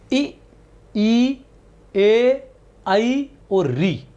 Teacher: इ ए और ऋ इनका जीभ के अग्र भाग से होता है।